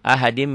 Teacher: Ahadin jadi ahadim, masuk ke mim. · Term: idgham bi gunnah